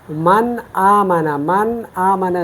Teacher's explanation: अगर हमने इसको ज़ाहिर करना है तो हम इसको इस तरह पढ़ेंगे, मन आमना, मन आमना, नून को गुन्ने के साथ ज़ाहिर करके पढ़ना है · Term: इज़हार